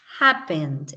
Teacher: la palabra happened es como si ella iniciara grande, alta, y fuese haciendo un descenso